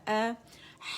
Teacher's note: حمزہ فتح ا اقص الحلق سے ادا ہوگا